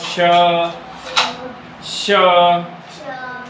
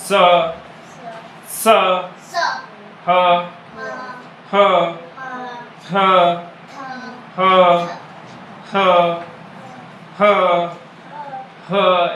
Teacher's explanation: स, स, ह, ह, ह, ह, ह, ह, ह ऐसे कर रहे तो वहाँ पे हमारे मुंह के अंदर हवा का घर्षण ज़्यादा हो रहा है, इसीलिए वो हवा क्या है, गर्म हो जाती है। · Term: ऊष्म व्यंजन